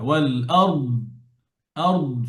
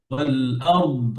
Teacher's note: শুধু আওয়াজ থাকবে ضادের মধ্যে ওয়াল আরদ আর আওয়াজটা হেভি হবে